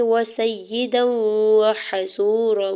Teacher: ہے، ہا کی زبر کو بغیر کھینچے ہوئے ادا کریں گے، واو ساکن سے پہلے صاد کے اوپر پیش ہے، واو مدہ اور دو حرکت کھینچ کے ادا کریں گے · دال کے اوپر دو زبر کے تنوین کو واو مشدد کے ساتھ ملاتے ہوئے ادغام مع غنہ کا رول اپلائی ہو رہا ہے ، واو کی زبر کو بغیر کھینچے ہوئے ادا کرنا ہے،